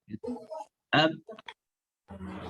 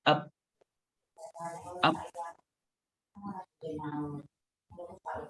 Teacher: Ketika ba disukunkan, maka otomatis kedua bibir kita nempel. Ab yang mengakibatkan suara tidak bisa keluar karena buntu. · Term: syiddah